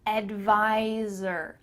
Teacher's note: when you say the word advisor, there's a Z sound there where the S is